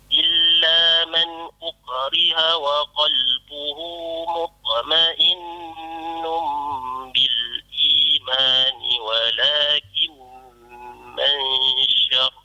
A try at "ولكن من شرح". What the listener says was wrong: Kalau pun di situ walakin man syarah, bukan syarh, walakin man syarah.